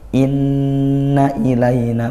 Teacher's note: Nah, di ayat yang ke-25 berikutnya inna ilayna, inna nun bertasydid dibaca dengung gunnah hukumnya